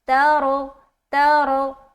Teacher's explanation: را کو موٹا رکھنا کیونکہ رائے ساکینہ سے پہلے یہاں پر زبر آ گیا. را کا معاملہ کچھ یوں ہے کہ رائے ساکینہ سے پہلے زبر یا پیش آئے گا تو رائے ساکینہ کو موٹا پڑھیں گے.